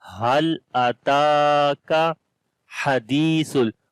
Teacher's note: Ha we read from the middle of the throat